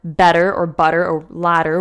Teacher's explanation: the kind of D sound that we say in the word better or butter or ladder, words like that, is very, very close to the Italian R